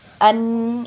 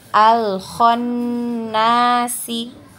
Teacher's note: Kemudian untuk nun bertasdid ya, yang ada tanda tasdid, khusus untuk huruf nun ya. Ketika bertasdid maka wajib gunnah atau wajib didengung ya. Kemudian tempo gunnah atau tempo dengungnya ini 2 harokat atau 2 ketukan ya. An itu ditahan 2 ketukan ya.